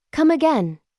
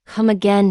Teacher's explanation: Notice that it's said as a question, so your intonation should rise at the end.